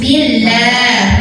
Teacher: Karena sebelumnya hurufnya barisnya di bawah kasrah, maka lah tipis. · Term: lam jalalah